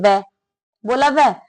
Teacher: वह को आप बोलेंगे तो जो हमारे दांत है वो होठों पर लगेंगे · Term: दंतोष्ठ